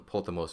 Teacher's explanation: this word is accented on its last syllable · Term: ultima